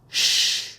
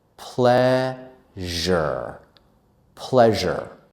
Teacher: we take the sh sound and then add our uh uh voice to the sound